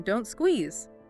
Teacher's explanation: the final T sound in negative contractions like can't or don't is often dropped, especially if the next word starts with a consonant sound. So not always, but often before a consonant. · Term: Dropping the T